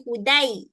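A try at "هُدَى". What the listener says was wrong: Betul. Panjang eh.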